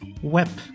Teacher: there are some words that end on a bay which is then pronounced like a pay